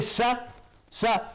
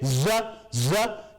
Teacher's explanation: The sa is voiceless, the za is voiced.